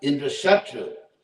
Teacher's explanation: you had to put the accent on Shatru